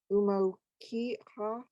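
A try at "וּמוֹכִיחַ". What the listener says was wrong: Switch the sounds of the chet and the chaf. Umo hi ach. Umo hi, because there's no dot, and then the chet with the is a at the end is a ach. Umo hi ach.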